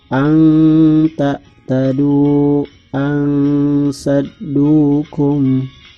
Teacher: Samar ya, antara jelas dan mendengung. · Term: ihfa